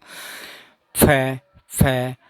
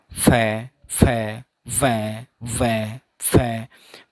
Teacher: जैसे आप मेरे साथ साथ बोलना, फ फ, आपका जो नीचे वाला होठ है ये होठ ऊपर वाले दांतों के पास जाके टकराता है